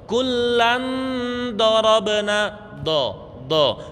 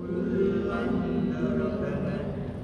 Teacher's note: Dot itu makhrajnya adalah pinggir lidah. Niki pucuk kanan kiri lidah. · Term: makhrajnya dot